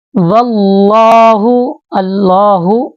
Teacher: دونوں لام کو واو کے ساتھ ملائیں گے اور لام کو موٹا کر کے پڑھیں گے